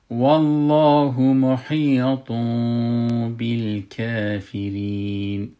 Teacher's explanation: نونشه تبدیل میکنیم به میم و میم لب خود نمی چسبانیم، اما چسبش لبش از بین میبریم و غنیش باقی میمانه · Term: اخفای شفوی